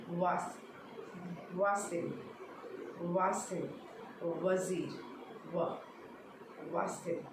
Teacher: जब वी वाला है तो व, डब्ल्यू वाला है तो व। उसमें दांत की ज़रूरत नहीं है, मतलब दांत का टीथ का काम नहीं है, हम सिर्फ दोनों लिप्स की हेल्प से बोल रहे हैं · व दोनों लिप्स को टच करके बोली, बहुत गोल नहीं करना